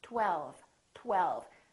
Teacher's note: first there was a tongue touching behind my upper teeth and then we round our lips